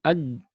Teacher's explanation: semua huruf yang qalqalah itu sifatnya syiddah, tidak keluar nafas